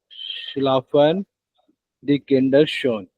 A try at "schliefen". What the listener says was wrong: Schliefen, ये schlafen तो नहीं है. Ja, schliefen, plural. या preteritum plural conjugation.